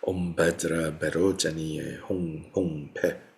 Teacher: So V is pronounced somewhere in between what we would pronounce as V and B. Bajra, Bajra is what you're hearing.